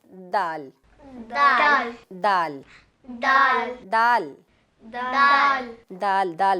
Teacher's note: जुबान की जो नोक है आपने जुबान ऊपर वाले दांतों की जड़ के साथ लगाना है। दाल दाल दाल दाल दाल दाल दाल दाल बोलना है आपने, डाल नहीं।